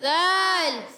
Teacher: نظری، نظری زال ہے زا نہیں، بن نظری نہیں کرنا، بن نظری یعنی زال کا جو مخرج ہے زبان کا سرا اور اوپر کے دانتوں کے اندرونی کنارے یا بیرونی کنارے، اس سے جب لگاتے ہیں تو ادا ہوتا ہے زال